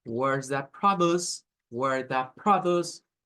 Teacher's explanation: tenemos como el énfasis en pro, ahí está el sonido más fuerte o la sílaba tónica